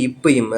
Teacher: ஸோ ரெண்டு மேலிதழும் கீழிதழும் பொருந்துவதால் வருவது இப்பு இம்மு.